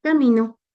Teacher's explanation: las vocales seguidas de un sonido nasal tienen una ligera nasalización, pero no como en el francés o el portugués. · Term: nasalidad